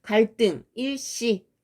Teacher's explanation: 한자에서 리을 받침 뒤에 결합되는 드스, 즈도 된소리로 바뀌는 현상이 있어요